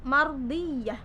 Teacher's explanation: Mardiyah ada ro sukun didahului fathah. Sudah pasti dia masuk ke dalam hukum bacaan ro yang dibaca tafkhim atau tebal.